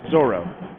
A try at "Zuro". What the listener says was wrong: No, not Zorro. No, just Zuro. Z-U-R. Zuro. Z-U.